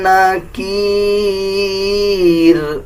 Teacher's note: جب وقف کریں گے تو را کو باریک پڑھا جائے گا